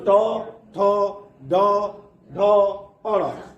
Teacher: और क्रम याद रखिएगा कि तालु के बाद जो है आपका मूर्धा आएगा, यानी क्रम से आ रहा है, पहले कंठ, उसके बाद तालु और टवर्ग जो है आपका मूर्धा में हो गया। यानी जब भी हम ट ठ ड ढ अ का उच्चारण करेंगे तो हमारी जीभ जो है मूर्धा को स्पर्श करेगी